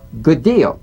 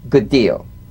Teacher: Identical, D to D, good deal. You don't need to fully pronounce the first D like good deal. Prepare the first, execute the second.